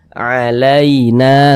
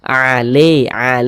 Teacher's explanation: Akan tetapi berhati-hati ya mengucapkan huruf lin yang terjadi pada huruf ya sukun. Jangan sampai condong ke huruf E. Jangan dibaca alaina. Jangan tapi dibaca alain seperti itu.